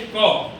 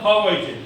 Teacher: ખબર પડે ને આખું ગળું કંઠ આવું કહેવાય એની સમજો કે જીભનો પાછળનો ભાગ કંઠ પાસે જઈને હવાને રોકે છે